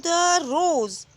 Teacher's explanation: the first syllable is unstressed and the second syllable is a stressed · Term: Iambic pentameter